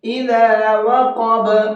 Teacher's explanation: اب با پر وقف کیا ہے تو با کے اندر بھی قلقلہ کریں گے۔